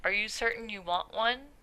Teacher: we have more subtle glottal stops if you say something like are you certain you want one